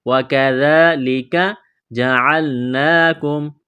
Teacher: وَكَذَلِكَ جَعَلْنَاكُمْ، واو کو پڑھتے وقت ہونٹوں کو گول کرنا ہے، کاف کو باریک کرنا ہے، یہ ذال ہے، ذال کو پڑھتے وقت زبان تھوڑی سی باہر نکالیں گے، ذال کے اوپر کڑا زبر ہے، ایک الف کے برابر کھینچنا ہے